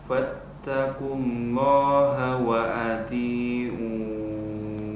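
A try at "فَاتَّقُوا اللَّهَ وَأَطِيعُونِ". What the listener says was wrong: Sudah bagus, tapi poknya kurang tebal. Wa ati. Ti. Hamzahnya ini harus kita jaga juga, jangan sampai seperti ain. Ti. Wa ati.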